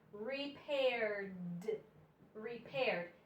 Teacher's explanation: this ed just sounds like D. The E is silent. You don't even hear it. It's just D. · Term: D sound